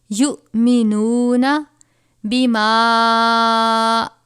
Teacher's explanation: یا یہاں پر حمزہ اور جزم ایک ساتھ ہے، حمزہ ساکنہ ہے، جھٹکا دے کر پڑھیں گے